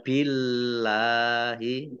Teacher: Allahnya dibaca tipis karena harokat di depannya kasroh.